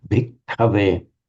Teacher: Again, you've got to hold the ka. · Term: doubled consonant